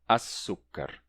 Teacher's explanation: Então, quando você vai juntar al com sukkar, não fica al-sukkar, e sim açúcar. O L do al é assimilado pelo S do sukkar e fica açúcar. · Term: assimilação